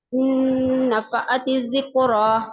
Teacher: नून साकिन के बाद नून आ रहा है तो नून को नून से मिलाकर गुन्ना करेंगे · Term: इदगाम